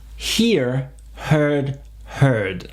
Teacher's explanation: il faut bien entendre le H et bien faire la diphtongue